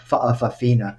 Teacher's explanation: It's pronounced with a glottal stop, fa'afafina.